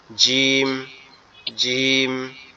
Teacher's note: উপরের দাঁত নিচের দাঁত একসাথে চেপে রাখতে হবে, হালকা চেপে রেখে জিম, জিম, এরকম একটু শক্ত আওয়াজ হবে